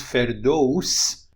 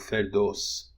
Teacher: Firdaus in Afghanistan and Tajikistan, but in Iran is pronounced ferdous, which would be a diphthong, but in rapid speech, it is reduced to a monophthong, ferdos.